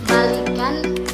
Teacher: Saya akan menjelaskan contoh dari modifikasi vokal adalah kata balik diucapkan balik, vokal I diucapkan I rendah, tetapi ketika mendapatkan sufiks an sehingga menjadi baikan bunyi I berubah menjadi I tinggi